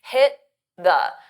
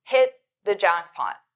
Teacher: So you don't really hear the T. This is called a flap T.